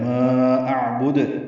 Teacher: ما اعبد میں ما میں مد منفصل ہے، الف مدہ کے بعد حمزہ آنے کی وجہ سے لمبا کریں گے 4 حرکات، جیسے آیت نمبر 2 میں لا اعبد پڑھا تھا، اب یہ ما اعبد ہے، حمزہ کو عین سے ملائیں گے، عین ساکن پہ اظہار، با کو دال سے ملا دیں گے، دال ساکن پہ وقفاً قلقلہ ہے۔